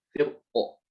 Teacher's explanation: Ra di sini boleh dibaca tebal dan juga boleh dibaca tipis ketika diwasolkan ya. Tapi kalau dia berhenti di kata firqin, maka cuma satu wajah aja, yaitu dibaca tebal